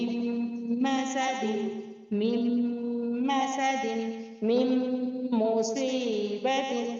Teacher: میم کو میم سے ملا کر غنہ کے ساتھ پڑھیں گے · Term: ادغام با غنہ